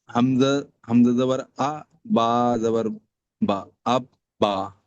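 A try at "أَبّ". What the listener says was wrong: দুবার উচ্চারণ করতে হবে, তো আপনাকে তাহলে বলতে হবে হামজা বা জাবার।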